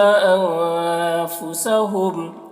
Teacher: انفسہم کے نون میں اخفا ہو رہا ہے